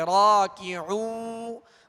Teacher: عین کو وسط حلق سے درمیانے حلق سے ادا کرنا ہے، اور آگے وہ مدہ ہے ایک الف کی مقدار، اسے کھینچیں گے لیکن ہونٹوں کو گول رکھیں گے۔